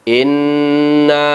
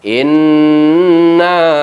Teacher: wainna kalkhof Inna ada huruf nun yang bertasydid kita rasakan Inna masuk dari rongga mulut kita menuju ke rongga hidung kita udara sehingga terasa bergetar di bulu-bulu hidung kita